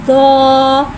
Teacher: दौद को एक अलिफ यानी 3 हरकत के बराबर खींच के पढ़ेंगे। दौद हुर्फ मुस्तालिया है, लिहाजा इसकी आवाज़ हलक से मोटी अदा होएगी।